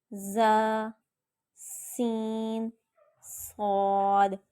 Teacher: ان کو سیٹی والے حروف اس لیے کہتے ہیں کیونکہ ان کو پڑھتے وقت سیٹی کی سی آواز آتی ہے، اور یہ زبان کی نوک سے ادا ہوتے ہیں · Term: حروف صفیریہ